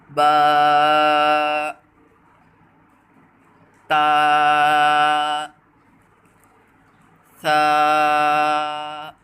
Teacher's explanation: ان کو ایک الف یعنی 2 حرکات کے برابر کھینچ کر پڑھنا ہے۔